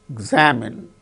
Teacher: In the case of the word examine, second syllable gains stress.